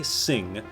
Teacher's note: Now if you look at the area in the mirror and say sing, and then take out the s part and just say a few times, you'll see the soft palate come down and the back of the tongue come up and meet each other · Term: ng sound